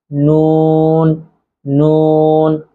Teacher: জিহ্বার আগার তার বরাবর উপরের তালুর সঙ্গে লাগাইয়া নুন নুন